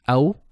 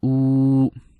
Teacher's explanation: Leen letters, no stretching, aw. Mad asli, stretching, two beats or 1 second, oo.